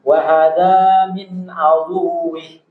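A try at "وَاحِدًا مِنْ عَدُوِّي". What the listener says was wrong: Ya, jadi tasdid pada wawu itu harus diperjelas. Wahada min aduwi. Min aduwi.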